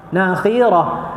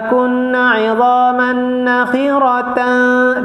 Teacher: dia bila wakaf jadi macam ha. Bila sambung jadi ta. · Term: ta marbutah